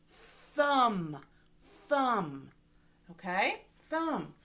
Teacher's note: my tongue goes up to the top of my mouth like by my front teeth thumb if we're going like this where my lip goes in